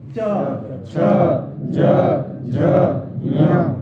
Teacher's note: च बोलने पर जिवा का तालू के साथ में स्पर्श हो रहा है